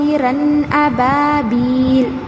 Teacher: की आवाज को और यहां पर गुन्ना नहीं हो रहा है नून की आवाज को नाक में नहीं छुपाए गे बल्कि जाहिर करके पढ़ेंगे · نون کی آواز کو ناک میں نہیں چھپائیں گے بلکہ ظاہر کر کے پڑھیں گے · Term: इजहार, اظہار